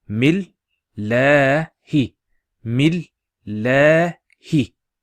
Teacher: The alif is there, and you got a shadda here. So we pronounce it as mil, and then that la stretching sound is due to the hovering alif and the hi.